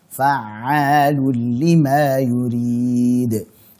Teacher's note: Ain alirkan sedikit, tawassut.